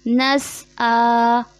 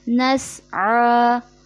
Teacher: यहाँ जो गलती होती है, आइन की जगह हमज़ा ले आते हैं